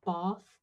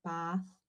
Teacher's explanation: For the bath vowel, we've got two forms, both quite long, one further back, more like bath, and one still long but more in the front, so more like bath.